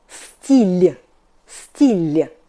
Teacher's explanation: Not still, but стиль, soft L. Not hard L, like in love, but soft L. Like in apple. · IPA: [steel']